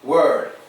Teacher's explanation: When you're saying word, your lips are not protruding. Word. They just get a little tense, but they don't protrude.